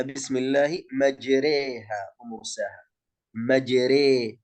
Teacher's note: Di dalam Al-Quran, di dalam riwayat Hafs an Asim hanya terdapat di satu tempat saja, dalam kalimat majriha. Majriha, ra-nya di dalam ra imalah, maka dia dibaca dengan tipis. Ini dalam keadaan kelima dari keadaan ra yang ditipiskan.